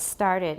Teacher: it's only slightly aspirated because it comes after S. So S and T started.